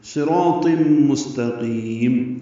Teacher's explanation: صراط مستقیم، صاد را الف طا پر ہے، تنوین کے بعد میم آنے کی وجہ سے ادغام ہے، غنہ ہوگا.